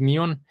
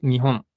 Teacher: la H se hace desde la garganta como un suspiro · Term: la H no es muda